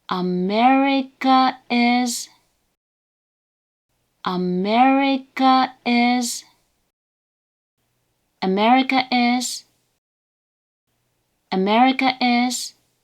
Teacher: the word's first mora has a low pitch, and all remaining mora in the word and the following particle have a high pitch. That said, the rise in pitch at the beginning of the word is usually quite gentle, even though standard binary pitch accent graphics like this can make it look quite dramatic. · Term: hebang